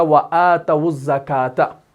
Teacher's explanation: واو لین کو بھی پیش دیا جائے گا جبکہ اس کے بعد الف لام تعریف ہو